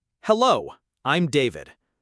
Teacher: stress on the second syllable of hello. Smooth contraction for I'm.